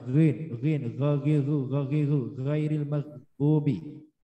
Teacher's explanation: Ghairil maghdubi itu pakai ghin bagian yaitu tenggorokan atas.